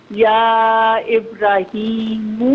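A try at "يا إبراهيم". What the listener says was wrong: پھر آپ وہی پڑھ رہی ہیں، ابراہیم ابراہیم. میری بہن میں را کو کھینچ کے پڑھے نا. ابراہیم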